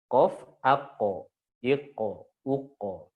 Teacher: Nah, qaf dia mantul, dia qalqalah, dia juga tebal. Maka qaf ini qalqalahnya tebal.